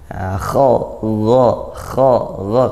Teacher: Kha ya, bedakan kha dengan ghain gitu. Kha dia desis, ada desan nafasnya, makhrajnya sama, yaitu di tenggorokan, ujung tenggorokan ya, yang sudah dekat dengan pangkal lidah. Kha. Kalau kha dia masih punya sifat hams mendesis. · Kalau kha dia masih punya sifat hams mendesis. Maka kalau ghain jangan sampai hams ya, agar tidak seperti kha.